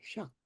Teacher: in this word for wild strawberries, it's just a short high A, shak